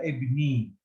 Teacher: It is just, it makes the kasra, the vowel of kasra that's before it, it makes it longer. It makes it double vowel. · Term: kasra longer